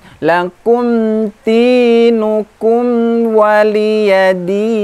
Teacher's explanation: sifat huruf mim sekali lagi adalah pertengahan, ya, tawassut antara syiddah dan rokhwah. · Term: idhar safawi